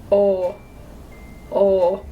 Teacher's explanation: rounded a little bit open and your tongue is going to be like in the middle of your mouth